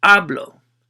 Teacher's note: work backwards counting syllables so second syllable is hablo so you're gonna stress or accentuate that one when you say it